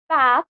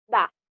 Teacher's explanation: RP having the back unrounded open vowel a in many words where GA has a front open unrounded vowel a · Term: trap back split